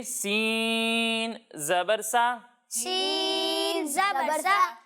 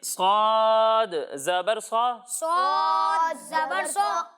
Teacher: جب ہم سین کی ادائیگی کریں گے تو اس میں سیٹی کی آواز آئے گی، اسی طرح جب ہم صاد کی ادائیگی کریں گے تو اس میں بھی سیٹی کی آواز آئے گی، لیکن ان دونوں میں فرق اس طرح ہوگا کہ سین کو ہم باریک پڑھیں گے اور صاد کو ہم موٹا کر کے پڑھیں گے